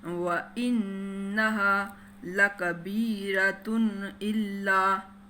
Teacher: وَإِنَّهَا لَكَبِيرَةٌ إِلَّا، یہ اظہار کا قاعدہ ہے، اس نون کو آپ نے ظاہر کر کے جلدی سے پڑھنا ہے، دیر نہیں لگانی اس نون پہ